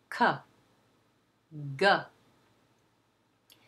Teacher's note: In other words, the back part of the tongue is raised and the back part touches the soft palate and there is a release. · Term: back sounds